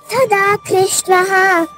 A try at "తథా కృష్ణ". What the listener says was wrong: తాకు ఒత్తులేదమ్మా. తథా కృష్ణ. మొదటి అక్షరానికి లేదు. తథా. రెండో అక్షరానికి ఒత్తు ఇవ్వండి. తథా.